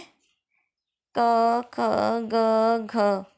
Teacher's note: कंठ व्यंजन जो कि कंठ से बोली जाती है